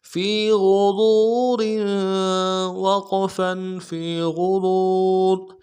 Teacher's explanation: الا فی غرور، فی غرور، فی میں فا کو یا کے ساتھ ملانا ہے، یا مدہ ایک الف دال میں کھینچیں گے، غین کو موٹا ادا کرنا ہے، را کو واو کے ساتھ ملانا ہے موٹا کرتے ہوئے، واو مدہ ایک الف دال میں کھینچیں گے، را کے نیچے تنوین ہے غنہ کریں گے، وقف کی صورت میں را کو جزم سے بدلیں گے